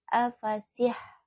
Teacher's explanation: ini huruf ha yang berasal dari tengah tenggorokan ya afasihunha runha Nah ini di atas ro ada harakat dah